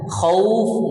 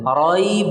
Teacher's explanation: Khauf umpamanya, raib umpamanya, disukunkan karena waqaf, maka dibaca panjang 2 atau 4 atau 6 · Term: mad lin